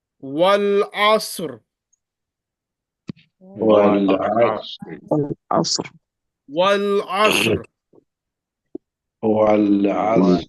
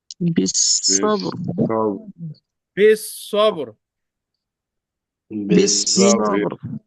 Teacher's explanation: when Ra Sakina preceded by Sakina, preceded by Fatha. In this case, Ra will be pronounced as thick. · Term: Ra is thick